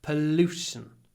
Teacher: More pollution. Because the vowel is clipped, сокращенный. Before the unvoiced глухой sh.